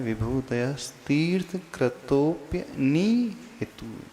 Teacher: नी में दीर्घ ई है और हितु में ह्रस्व ही ई है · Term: दीर्घ ईकार